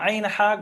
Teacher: গলার মাঝখান থেকে উচ্চারণ হয়